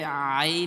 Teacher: বাংলায় উচ্চারণ হয় আইন তো এটা আইন হবে না এটা হবে আরবিতে আইন হবে গলার মধ্যখান থেকে উচ্চারণ হবে ওটা শক্ত করে আইন হবে